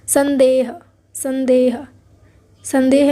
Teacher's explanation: अनुस्वार यानी कि इन्हें पढ़ने के टाइम पे हम अपनी नाक से आवाज़ निकालते हैं